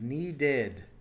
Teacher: Notice the id ending here and the addition of an extra syllable.